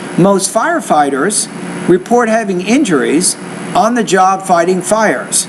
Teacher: the tone also goes up after the second thought group and then it drops when you get done with the last one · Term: rising tone